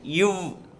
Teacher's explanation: மேல்வாய் பல்லை கீழ் உதடு பொருந்துவதால் பிறக்கும் மெய்யெழுத்து